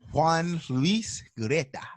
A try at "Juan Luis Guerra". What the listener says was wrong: No, Guerra. I said R, Guerra.